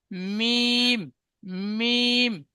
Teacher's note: দুই হোঁঠের শুকনো অংশ মিলিত হয়ে উচ্চারিত হয় মিম